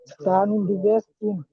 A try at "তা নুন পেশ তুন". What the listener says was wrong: তা দু পেশ তুন। তা নুন পেশ তুন, এটা তা নুন দু পেশ বলবেন না, একটা পেশ আছে, ঠিক আছে।